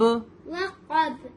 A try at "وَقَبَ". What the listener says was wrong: ہاں، با کو ہم کو واپس لینا ہے، با کی آواز کو واپس لے کے آنا ہے.